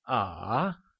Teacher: It starts at the middle, drops, and picks up again, and is therefore known as the falling rising tone.